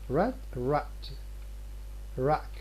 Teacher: many speakers have a glottal stop just before final voiceless stops in words such as rat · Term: glottal stop accompaniment